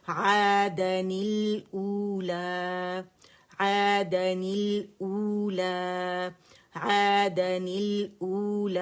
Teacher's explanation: یہ مد بدل ہے. ٹھیک ہے، تو دو کاؤنٹ کے لیے ہم نے آواز کو گول کرنا ہے